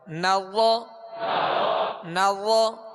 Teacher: ہونٹوں کو ضا میں گول نہیں کریں گے، ضا حروف مستعلیہ میں سے اس کو پر پڑھیں گے · پر پڑھیں گے، یہ پر پڑھنا اس کی خوبی ہے، اور نرمی کے ساتھ ادا کریں گے، اس میں زا کی آواز نہ آئے، سختی کی یعنی سیٹی کی آواز اس میں پیدا نہ ہو